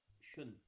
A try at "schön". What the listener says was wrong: शोन, इसको शोन नहीं पढ़ा जा सकता बिकॉज शोन एक दूसरा वर्ड है, दस इज गांस अंडरस, जिसका मतलब होता है ऑलरेडी.